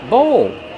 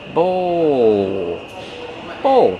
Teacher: Use the long O like no and go plus the dark L.